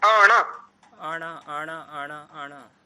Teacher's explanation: डा नहीं णा की साउंड आनी चाहिए। णा जैसे टा बोलते हैं ना, जहां से टा णा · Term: णकार